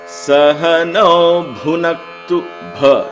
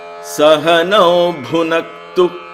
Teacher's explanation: it's mahaprana there. There is an emphasis on the word bha.